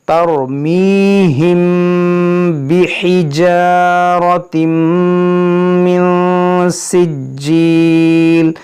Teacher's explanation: دیکھیں یہاں دیکھیں را ساکن سے پہلے زبر ہے تو یہ را موٹا ہوگا، پھر میم ساکن کے بعد با ہے، یہاں پر غنہ ہوگا